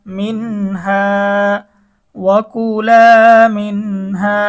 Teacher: নুন সেকেনের পরে ইজহার হরফ হা এসেছে গুন্নাহ ছাড়া স্পষ্ট পড়তে হবে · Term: নুন সাকিনের ইজহার